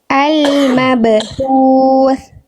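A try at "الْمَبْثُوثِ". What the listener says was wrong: Bagus.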